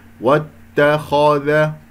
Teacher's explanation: الخاء هنا انحصرت بين المرققين، والخاء مفتوحة إذا مفخم مرتبة ثانية